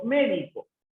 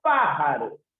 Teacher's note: la sílaba tónica se encuentra en la antepenúltima